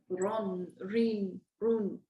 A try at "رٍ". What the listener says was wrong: Be careful. Don't say reen. Rin, run, rin, run.